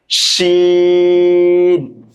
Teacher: জিহ্বার মধ্যখান উপরের তালুর সঙ্গে লাগিয়ে উচ্চারিত হয়।